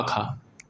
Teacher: स्पर्श, कंठ, अघोष, महाप्राण